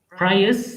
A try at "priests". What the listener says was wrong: Priests. Priests. Priests. T is there. TNS. Priests.